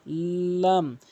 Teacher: লাম হরফটি জিহ্বার আগা উপরে তালু থেকে লাম লাম এভাবে উচ্চারণ করবেন। লাম জিহ্বার আগা এক পাশে মারির সঙ্গে লাগাবেন